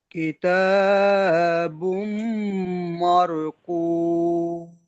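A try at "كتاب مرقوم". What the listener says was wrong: সুন্দর, মাশাআল্লাহ।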